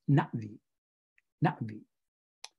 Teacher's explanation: the apostrophe is a glottal stop